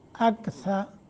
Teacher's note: را کو موٹا کریں گے چونکہ اوپر زبر ہے. ہم اظہار ہوگا.